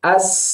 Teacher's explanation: Ketika diucapkan bunyi sukunnya as. Nah, ternyata sin itu tidak tertahan suara kita karena dia ngalir terus. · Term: rohwah